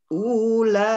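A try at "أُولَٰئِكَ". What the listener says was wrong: unya pendek.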